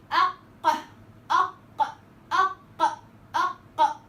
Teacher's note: الحبسه بتاعت القاف عشان في قوه اعتماد فهزت الاحبال بقوه وقلبت كله صوت، وانا بفك بقوه عايزه انا كمان خلاص اتنفس، ما هو الصوت محبوس جوه اق اق. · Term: حرف مجهور